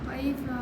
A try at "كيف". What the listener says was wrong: کیف نہیں کیف کاف کو باریک کرنا قاف موٹا نہیں بنانا اس کو کیف قی نہیں کیف کیف